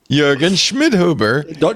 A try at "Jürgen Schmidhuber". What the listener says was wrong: You got to get the umlaut in there. No, that's more Swedish. Jürgen Schmidhuber.